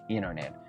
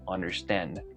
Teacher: Pero otro ejemplo común es la palabra understand. Ese sonido de N más D se van a unir y van a generar ese sonido rápido de N